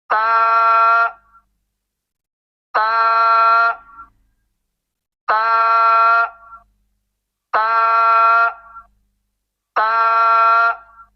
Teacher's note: جب ہم تا کو ادا کرتے ہیں نا تو ہماری زبان جو ہے نا وہ دانتوں کے ساتھ لگتی ہے